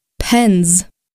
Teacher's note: If the plural S comes after a voiced consonant, such as n in pen, it will make the voiced sound z, pens.